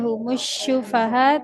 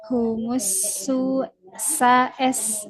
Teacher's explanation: huruf sin tidak menjadi shin, tidak humus syufaha tapi humus sa s. · ujung lidah dengan ujung gigi seri bawah